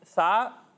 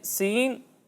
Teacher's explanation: جب ہم ثا کی ادائیگی کریں گے تو اس میں سیٹی کی آواز نہیں آئے گی، لیکن جب ہم سین اور صاد کی ادائیگی کریں گے تو ان دونوں میں سیٹی کی آواز آئے گی، ٹھیک ہے؟